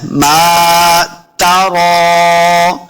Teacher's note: मा मीम के आगे अलिफ है, तो इसको 2 हरकत लम्बा करना है। मा तरा, रॉ के ऊपर खड़ी ज़बर है, इसको 2 हरकत लम्बा करना है, रॉ पर पढ़ा जाएगा।